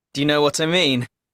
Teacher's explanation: The stress is mean